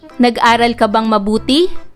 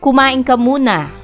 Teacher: Ang tono o intonasyon ng pangungusap na nagtatanong ay karaniwang pataas ang boses sa dulo ng pangungusap. Ang tono o intonasyon naman ng pangungusap na nag-uutos ay karaniwang pababa ang boses sa dulo ng pangungusap.